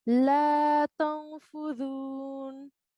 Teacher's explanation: we will produce a nasal sound for this noon sakin.